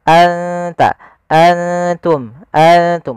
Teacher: Ikfa itu membaca antara izhar dan Idam maka maka di sini nunnya kita samarkan ke huruf ta langsung seakan-akan kita melafalkan huruf ta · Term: ikhfa